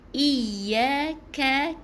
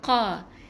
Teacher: Lepas tu ya 2 harakat Iyaka, ka yang nipis huruf kaf adalah huruf K Jadi nipiskan ka, bukan qa.